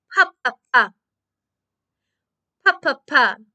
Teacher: If I put my hand in front of my mouth, a little bit of air comes out.